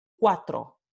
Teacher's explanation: tiene su alófono semivocal, en este caso es labio velar